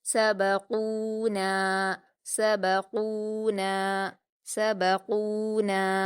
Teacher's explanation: نون پر الف مدہ ہے، 2 حرکات کھینچیں گے